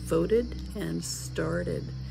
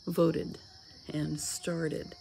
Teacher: the ed ending is going to make a separate syllable because after the verb ends in a t sound it has to have a separate syllable